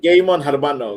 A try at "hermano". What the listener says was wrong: It's not Hermano, by the way. It's Hermano. The H. The H is like silent. The H is silent, man.